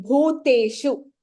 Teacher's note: in the first line, bhuteshu, bha is Mahapranah